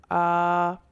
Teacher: حمزہ کا مخرج ویسے تو حلق کا آخری حصہ ہے، لیکن اس کی جو ادائیگی ہے وہ منہ کے خالی حصے سے ہوتی ہے